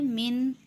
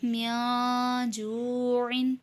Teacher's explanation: اس کے بعد نون ساکن کے بعد جیم ہے۔ جیم حروف اخفا میں سے ہے تو یہاں اخفا یعنی غنہ کر کے پڑھیں گے، من نہیں بلکہ میاں جوعن۔